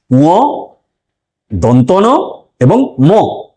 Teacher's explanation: এই ধ্বনিগুলি উচ্চারণের সময় মুখবিবরে যে বায়ু আবদ্ধ থাকে সেটি নাসারন্ধ্রের মধ্য দিয়ে বাইরে বেরিয়ে এসে এই ধ্বনিগুলি উচ্চারিত হয় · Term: নাসিক্য ধ্বনি